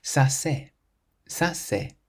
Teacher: Ça c'est just glides more smoothly than ça est.